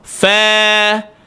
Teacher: apabila ra tanda sukun huruf sebelumnya baris di atas, maka dia datang sifat tafkhim, iaitu tebal. Far, fa bukan fa.